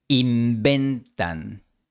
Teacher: El español general no tiene v, solo b. Esta b es bilabial y causa que la n anterior también sea bilabial. Inventan. Fíjate en los labios.